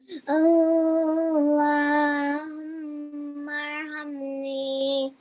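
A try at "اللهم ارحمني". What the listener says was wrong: Just be careful of that in the beginning, okay? Stretching that for 2 seconds, the Allah, okay?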